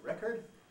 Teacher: we have the verb to record and the noun a record americans sometimes weaken the second vowel